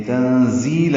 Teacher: تنزیل میں نون ساکن کے بعد زا آنے کی وجہ سے اخفا ہے، نون کی آواز چھپائی جائے گی. زا تیز صفیر کی آواز سے ادا کریں گے.